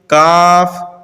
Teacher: जबान की जड़ और तालू के सख्त हिस्से से अदा होते हैं